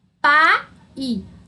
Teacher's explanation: O A, aquela vogal aberta, né? Forte. E o I, que é uma semivogal. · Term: ditongo